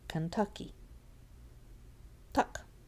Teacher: Tuck. That has the tonic stress.